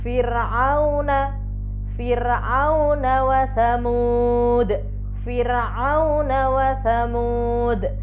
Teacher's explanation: Nah, dan sesudahnya tidak ada huruf isti'la. Tuh, maka ro dibaca tarqiq atau tipis